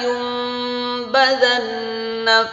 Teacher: Nun sukun bertemu dengan ba namanya iqlab. Terus ada nun tasydid namanya gunnah musyaddadah. Perhatikan baik-baik, harus dibaca mendengung.